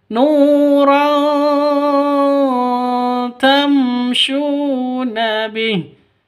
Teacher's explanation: Tanwin bertemu dengan ta. Cara bacanya samar didengungkan, siap-siap ke huruf ta-nya. Kenapa? Karena ini bacaan ikhfa hakiki.